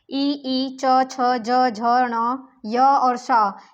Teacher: ये सारे वर्ण जो हैं, इनसे जितने भी हैं ये नाम, नाम वाले, ई, च, छ, ज, झ, ण, य और श, इन सभी नाम वाले शब्द जो हैं वो तालव्य यानी कि तालु से उच्चारित होंगे